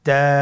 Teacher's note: তা হরফটি বারিক হরফ এবং এক আলিফ টেনে পড়তে হবে